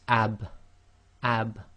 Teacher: being scking it will be pronounced ab ab and there's a slight Echo where the dry portions of your lips have to separate in order to complete the sound